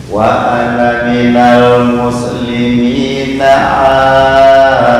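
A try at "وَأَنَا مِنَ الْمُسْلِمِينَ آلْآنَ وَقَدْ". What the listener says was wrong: Bukan al, bukan double. Al-ana wa qad al-ana wa qad.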